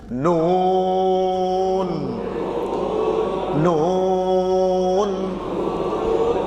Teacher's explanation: कि आवाज नाक में नहीं अक्सर लोग न नाक में पढ़ते नाक में आवाज जाएगी एक 10 फीसद 90 फीसद मुंह में